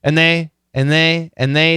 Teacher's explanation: the N is going to cancel the D and the N can cancel the th